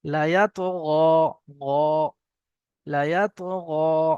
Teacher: গইন উচ্চারণ করার সময় মুখটা একটু গোল হয়ে যাবে।